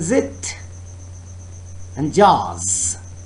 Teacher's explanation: air is forced through tongue and alveolar ridge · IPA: /z/